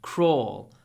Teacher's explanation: dark L that's l in your throat at the end